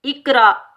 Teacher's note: ساکن حمزہ کو ہم جھٹکے سے ادا کریں گے